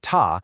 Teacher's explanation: Make that shape with your hand. So for the first tone, ta, trace a flat, level line in the air.